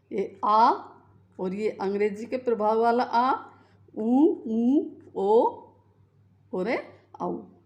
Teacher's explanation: इनको बोलकर देखिए, जीभ का पीछे का भाग जो है वो जो है सक्रिय रहता है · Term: पश्च स्वर